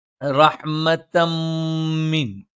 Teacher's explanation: ഇവിടെ ശ്രദ്ധിക്കേണ്ടുന്ന തജ്വീദ് നിയമങ്ങൾ: ഇല്ലാ റഹ്മതം മിൻ, തൻവീന് ശേഷം മാ വന്നു, ഇദ്ഗാമും ബിഗുന്നയാണ്. തൻവീനിന് ശേഷമുള്ള മീമിലേക്ക് ചേർത്ത് വായിക്കും, അതോടൊപ്പം മണിച്ചുച്ചരിക്കുകയും വേണം. റഹ്മതം മിൻ, റഹ്മത്തൻ മിൻ എന്നാണ്. · ശേഷമുള്ള മീമിലേക്ക് ചേർത്തു അപ്പോ എങ്ങനെയാ വരുന്നത് റഹ്മത്തമിൻ അപ്പോ മണിക്കുക കൂടി വേണം റഹ്മ നൂനിന് ശദ്ദ് വന്നു മണിച്ചു ഉച്ചരിക്കണം